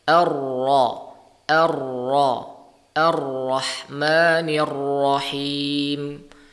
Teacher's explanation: Namun perlu kita ketahui bahwasanya ketika melafalkan huruf ra, memang sifat lazim daripada huruf ra adalah takrir, namun tidak boleh dilebih-lebihkan.